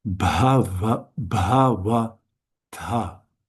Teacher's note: The stress, the emphasis should be on the first because they're the three short syllables